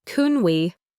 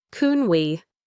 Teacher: can in a question is often unstressed and sounds like kun. So, can we sounds like kun we.